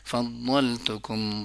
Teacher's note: انعمت علیکم وانی فضلتکم، یاد رکھیے گا فضلتکم نہیں ہے، فضلتکم بھی نہیں ہے، فضلتکم. ضا زبان کا سائیڈ والا حصہ اور سائیڈ والے دانتوں کے ساتھ جن کے ساتھ کھانا کھاتے ہو